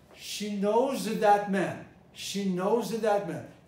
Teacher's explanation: She knows that man, but that is a demonstrative. Demonstratives are stressed.